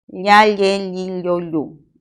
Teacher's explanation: Por lo tanto, es un sonido africado, palatal y sonoro.